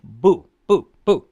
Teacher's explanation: boo which is a fourth tone by itself